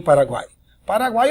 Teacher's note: a sequência do tritongo semivogal vogal e semivogal